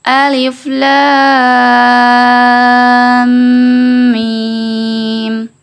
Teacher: Jadi alif, lam panjang 6 harokat, masuk ke mim bertasydid, ditahan dan didengungkan 2 harokat.